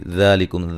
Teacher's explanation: ذالکم ذا الف مدہ کے قائم مقام کھڑی زبر ہے، ٹھیک ہے. کھڑی زبر کو ایک الف کی مقدار کے برابر لمبا کریں گے. کم کاف کو باریک پڑھیں گے، میم ساکن کا اظہار ہے.